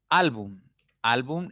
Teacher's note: llevar tilde album album es una palabra de dos sílabas listo la mayor intensidad está en la segunda sílaba contando siempre de derecha izquierda